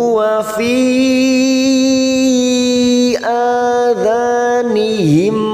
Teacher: Fi ada mat yang bertemu dengan hamzah di lain kalimat, mat jaiz munfasil. Fi kita panjangkan 4 harokat.